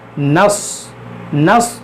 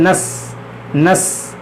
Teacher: इसको मोटा करके पढ़ना है क्योंकि ये हुरूफ़ मुश्तालिया है।